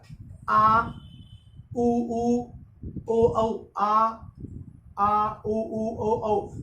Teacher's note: जीभ आगे से बिल्कुल सक्रिय नहीं है, इसलिए इनको पस्त स्वर कहा जाता है